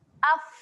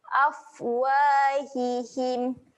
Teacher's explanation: Fa ketika mati sifatnya keluar angin. Sifat dia keluar angin.